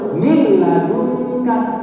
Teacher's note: Langsung masuk miladunka. Seolah-olah gak ada nun, langsung lebur. Seolah-olah harus bertasdid miladunka. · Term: tidak berdengung